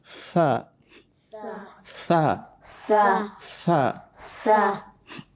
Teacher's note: the tip of your tongue touches the tip of these central upper incisors, and you try to slightly bring the tongue out in between the upper and lower incisors